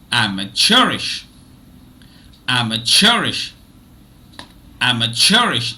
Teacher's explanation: Now if you notice, I do not stress am as much as I stress chur. Okay, so chur receives it's the loudest among the 4 syllables. Am is a bit less loud than chur. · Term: secondary stressed syllable